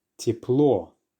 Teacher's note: the letter Ye also gets reduced when it's in an unstressed syllable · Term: reduction